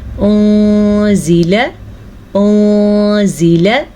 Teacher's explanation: غنہ یعنی کہ لمبا بھی کریں گے اور نون کو چھپا کے بھی پڑھیں گے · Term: اخفا